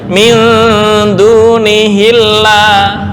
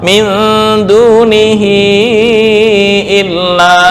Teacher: Ini misal hamzahnya adalah hamzah wasal, maka membacanya min dunihillah, tapi berhubung hamzah qata', min dunihi illa.